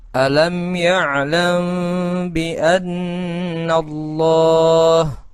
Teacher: dengan suara yang samar antara mim dan ba pada bibir kemudian ditahan kira-kira dua harakat atau dua ketukan Seraya mengeluarkan huruf ikhfa dari pangkal hidung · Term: Ikhfa Syafawi